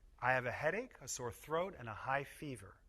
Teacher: The voice goes down on the last item in the list. Listen to the way my voice goes up on the first two items. · We put stress on each item in the list and pause a little between each item.